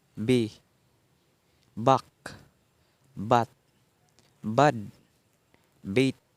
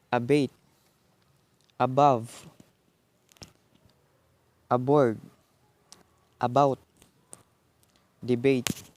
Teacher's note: Voice bilabial stop. Initial.